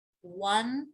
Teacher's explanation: one, right, starting with almost a W sound